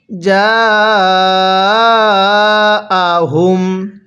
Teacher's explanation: এই জিমের মধ্যে কিন্তু আমরা চার আলিফ টান দিব কারণ মদের হরফের উপর এইরকম মোটা চিহ্ন এরপরে গোল হামজা থাকলে